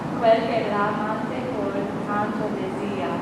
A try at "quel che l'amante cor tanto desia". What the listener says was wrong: There you go. That's Italian. Good.